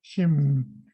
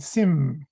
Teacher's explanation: In Alaska, most of us grew up hearing the SH sound, shim, whereas in BC, a lot of people heard sim without the SH sound. Sim means exactly the same thing, it's just a regional difference.